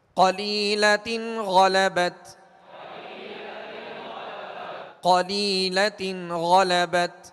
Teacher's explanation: قاف کو پر پڑھیں گے حروف مستعلیہ میں سے ہے. لام یا زیر لی, یہاں یا مدہ ہے, یا ساکن سے پہلے زیر ہے لہذا یا مدہ ہوگی.